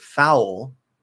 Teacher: If you do the dark L, what I call the half L vowel sound, the tip of the tongue does not even come up. · for that dark L, that half L vowel sound, you're using more the back of the tongue. The front, even if it could possibly point up, but it's not going to touch.